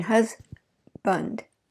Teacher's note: these very clear and strong vowels are being reduced to weak vowels · it's the that vowel uh is the central mid lax vowel that means we're just neutral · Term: schwa reduction